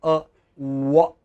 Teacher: lips are completely rounded, like you are going to say ooh, round, just round, and then say a wa.